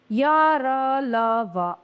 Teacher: आगे हम पढ़ते हैं अंतस्थ व्यंजन सेमी कोसोनेंट इन व्यंजनों के उच्चारण में मुंह में किसी भाग से जीभ का स्पर्श पूरी तरह से नहीं होता। यह जीभ मुंह के भागों से बहुत ही हल्का सा स्पर्श करती है।